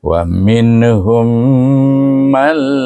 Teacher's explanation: man bertemu dengan huruf lam lam adalah huruf idgham tapi tidak boleh didengungkan Maka dibaca dengan idram bila guna. · Hazfkan nun terus sama sekali. Mim alif lam mal.